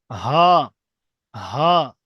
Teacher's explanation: কণ্ঠনলী যেটা আমাদের নলীর শেষ ভাগ, অর্থাৎ সিনার দিকে যে নেমে গিয়েছে, এই নলীর শেষ ভাগ থেকে উচ্চারণ হবে হা, হা, একটু হা, গম্ভীর আওয়াজে, জি, হা, হা, জি, হামজা, ইয়া, ইয়া।